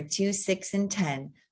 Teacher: those are our sixth tone the flat low tone